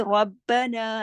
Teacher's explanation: रा मोटा पढ़ा जाएगा, आगे तशदीद है